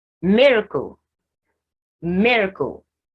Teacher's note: Only me is stressed. And the last two syllables are unstressed. And they even have, both of them have the schwa sound.